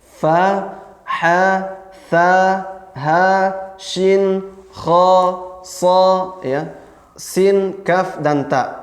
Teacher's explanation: suaranya agak samar karena udaranya mengalir sempurna dan pita suaranya terbuka dan tidak bergetar pita suaranya. · Natijata infitahil watarain as-sawtiyain, akibat terbukanya dua pita suara, ya. Akibat terbukanya dua pita suara sehingga suaranya menjadi samar. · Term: sifat khafa